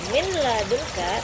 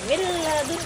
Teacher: Maka huruf nun matinya atau nun sukunnya masuk ke dalam lamnya. Jadi, tidak dibaca minadunka, tapi dibaca millunka.